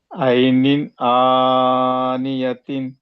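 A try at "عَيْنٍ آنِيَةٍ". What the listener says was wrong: ఇది కరెక్ట్. మీకు 100 సార్లు చదవాలనే భయం పట్టుకుని చక్కగా చదివారు, అవునా?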